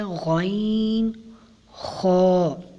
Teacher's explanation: حلق کے اوپر والے حصے سے ادا ہوتا ہے